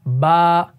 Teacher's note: हरफ बा जो है ना, ये दोनों होंठों के तर हिस्से से अदा होता है। ठीक, तो मैं यहां पर लिख देता हूं दोनों होंठों के तर हिस्से से।